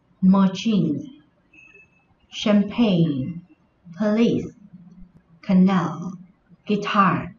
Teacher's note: Đây cũng là những danh từ có hai âm tiết. Tuy nhiên trọng âm của nó rơi vào âm tiết thứ hai.